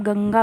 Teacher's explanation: अगर आप गंगा बोलेंगे तो आप देखेंगे कि आपकी जो हमारी नाक होती है उसमें हल्की सी झनझनाहट होती है, तो इसकी आवाज़ हमारी नाक से निकलती है, अनुस्वार वाले शब्द जो होते हैं।